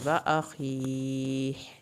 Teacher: یبصرونہم، یود المجرم لو یفتدی من عذاب یومئذ ببنیہ وصاحبتہ وأخیہ، صاد کو پر کرنا ہے، کھڑی زیر کو کھینچیں گے اور آخر میں ہا کی آواز نکلے گی۔